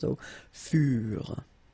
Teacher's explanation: the ending for the plural form is never pronounced